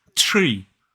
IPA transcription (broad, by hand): triː